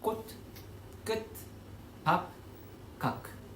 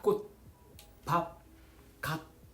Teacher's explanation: 제대로 발음하기 위해서는 마지막에 숨을 멈춰야 합니다. 꽃, 밥, 각 이렇게요.